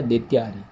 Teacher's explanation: द्वितीय द्वितीय, अ का उच्चारण आ रहा है और यह भी अ है, तो दोनों अ मिलके क्या हो जाएगा? आ हो जाएगा। ये अ जो है इसमें जुड़कर आ हो जाएगा, तो बन जाएगा द्वितीयारी। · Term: दीर्घ